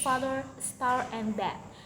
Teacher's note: The tongue is positioned low and towards the back of the mouth. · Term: low back vowels